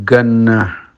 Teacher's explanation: orang-orang Mesir mengucapkan jim itu gim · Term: bahasa pasaran